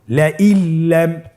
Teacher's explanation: নুন সাকিনকে আমাদেরকে পরবর্তী হরফের সাথে মিলিয়ে গুণা ছাড়া পড়তে হবে